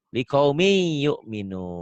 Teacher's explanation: Bisa dikatakan idgham itu tulisan dan bacaan beda. Ditulisnya ada bunyi N-nya, dibacanya N-nya hilang, melebur.